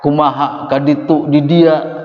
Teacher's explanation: Sunda juga begitu. Banyak mati hamzah di ujung belakangnya.